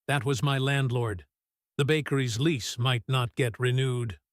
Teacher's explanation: Listen to how flat and clipped this sentence sounds, almost business-like, because he's still processing the news himself, not yet fully reacting emotionally. Sometimes, right after receiving difficult news, people's voices actually go quite flat and controlled for a moment, almost like a kind of shock before the real emotional reaction catches up a few seconds later.